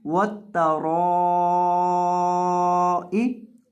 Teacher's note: जब हम हमजा को पढ़ेंगे तो इसकी मिकदार एक अलिफ से बढ़कर 3 अलिफ के बराबर हो जाएगी, यानी इसको 3 अलिफ से 4 अलिफ लंबा किया जाएगा।